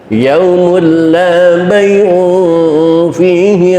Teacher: Ini idghamnya idgham tam, idgham yang sempurna masuknya suara tanwin ke huruf lam 100%, sampai tidak terdengar lagi suara tanwinnya, yang terdengar hanya tasdid lam